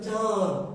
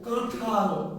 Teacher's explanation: এই যে আপনি যখন বলছেন কাঁঠাল, তখন এই ক ধ্বনিটা অর্থাৎ চন্দ্রবিন্দু যার উপরে থাকছে তাকে নাসিক্য করে দিচ্ছে। চন্দ্রবিন্দু নাসিক্য না, চন্দ্রবিন্দু দিয়ে দোতিত বা উচ্চারিত ধ্বনিটা নাসিক্য।